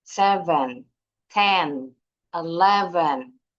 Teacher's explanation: pengucapannya enggak ada nadanya, enggak ada intonasinya, datar aja. 7 10 11 Walaupun 11 ada sedikit intonasi naik 11 di tengah.